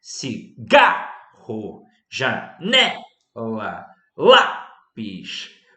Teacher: Nós temos a sílaba tônica na penúltima sílaba. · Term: Paroxítonas